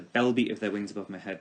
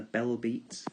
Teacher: we have a sense of pairings in the bell beat, the assonance of those plosive B's. The bell beat of their wings above my head calls to mind the sound of the wings, and hearing birds' wings, there's often a percussive quality to it.